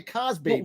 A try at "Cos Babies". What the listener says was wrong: It's not Cosby. It's Cosby. Yeah, they think you're saying Cosby. It does sound like you're saying Cosby. It's not Cosby.